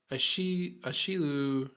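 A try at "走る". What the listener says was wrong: Ha. Ha. Ha. No, not a. Ha. Hashiru.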